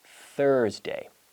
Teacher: this TH sound is with the vocal cords muted. So this is, the mouth does the same thing, but there's no activity in the vocal cords.